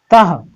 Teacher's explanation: जैसे सूत्र है एक वचनम में ति, द्विवचनम में तह, ये विसर्ग है और विसर्ग का उच्चारण ह के रूप में होता है